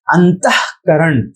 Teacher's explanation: अंतःकरण शब्द में अंतः त के बाद ह की ध्वनि आती है, अंतः ह पूरा नहीं है फिर भी ह की ध्वनि है, तो वैसी स्थिति में हम लोग इस विसर्ग का प्रयोग करते हैं।